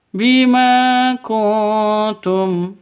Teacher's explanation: Nun mati bertemu dengan ta. Cara bacanya samar didengungkan. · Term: ikhfa hakiki